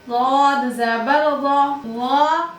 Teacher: वाद मुस्तालिया में سے ہے اور اطباق کی صفت بھی ہے. مستعلیہ میں سے ہے تو موٹا کر کے پڑھیں گے. اطباق کی صفت ہے تو اور زیادہ موٹا کر کے پڑھیں گے